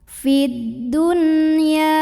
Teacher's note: Ada idhar mutlak atau idhar wajib karena ada nun sukun bertemu huruf ya dalam satu kata yaitu kata ad-dunya. Maka nunnya tetap dibaca jelas idhar. Nunnya dibaca n tidak ditahan.